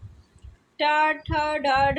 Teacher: ट, ठ, ड, ढ ये ट वर्ग की ध्वनियां है। इनका उच्चारण स्थान क्या होता है? मूर्धन्य होता है।